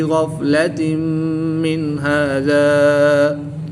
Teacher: دو زیر کی تنوین کے بعد میم حروف یرملون میں سے ہے تو یہاں پر ادغام مع الغنہ ہوگا، غنہ کر کے پڑھیں گے